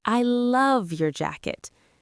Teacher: The word love is stressed. It is the most important feeling in that sentence. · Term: word stress